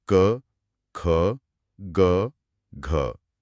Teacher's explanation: हम इन ध्वनियों को बोलते समय हवा को गले के एकदम पिछले हिस्से में रोका जाता है कंठ में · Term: क वर्ग